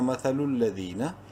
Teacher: مثل، لام زبر لا، ذال یا زیر دی یا مدہ ہے، ذال کو 1 الف کے برابر لمبا کریں گے